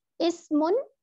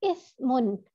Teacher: سین جو ہے وہ سیٹی والا حرف ہے اور سا جو ہے وہ نرم حرف ہے